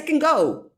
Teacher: i don't pronounce it i don't stress the verb can because the meaning the important meaning is on the adverb okay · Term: sentence stress